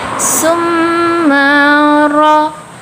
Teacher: Ro di sana berharokatkan fathah, sehingga ro-nya disebut dengan ro tafkim atau ro yang dibaca tebal karena memiliki harokat di atas, yaitu harokat fathah.